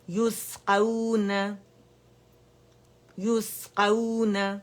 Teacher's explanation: سین میں آواز چلے گی، صفیر بھی ہے، ہمس بھی ہے، باریکی بھی ہے، ٹھیک ہے، یعنی سیٹی کی آواز بھی ہے